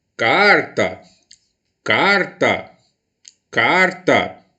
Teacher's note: Carta, carta, carta. A sílaba que eu emprego maior potência vocal é a sílaba car. Como ela é a penúltima da palavra, eu classifico como liana. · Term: sílaba tônica